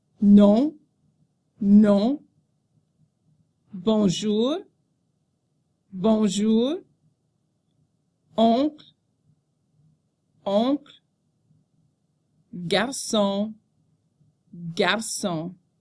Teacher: The letters O-N represent the nasal sound on. Be sure not to pronounce the N after the nasal vowel.